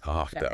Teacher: Have to very commonly squishes down to hafta.